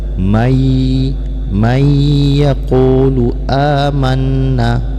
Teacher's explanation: Wa minan nasi man yaqulu amanna, man yaqulu, nun bertemu dengan ya, hukum bacaannya idgham ma'a gunnah, yaitu diidghamkan suara nun ke dalam ya beserta didengungkan